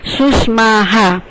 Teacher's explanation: પછી સુષ્માહા આપેલું હોય તો સુષ્મા માની સાથે આ જોડાયેલું છે એટલે વિસર્ગનું ઉચ્ચારણ હા થાય